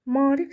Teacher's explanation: Maarif sözü bu şəkildə M-A qoşası aiddir. A-nın biri düşür, digəri uzun tələffüz olunur. Rif şəklində tələffüz edilmiş olacaq.